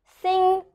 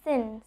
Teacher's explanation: NG sound is made from the back of your mouth, but N sound is made with the tip of your tongue. Okay, so you must also know how the N sound is made, because you might mistakenly pronounce any word with instead of pronouncing it NG, you might pronounce it as N.